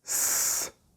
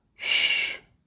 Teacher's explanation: You must be able to make these two sounds distinctly or otherwise you would probably pronounce a different word. Both sounds are made by blowing air through the tip of your tongue, and we do not use our vocal cords. However, the shape of the tongue and the mouth is completely different for each sound, /ss/ and /sshh/ the /ss/ shape is formed with a smile on your face.